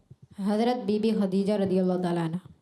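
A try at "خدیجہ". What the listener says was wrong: खदीजा में दाल है या ता है? मगर सबने ता पढ़ा है।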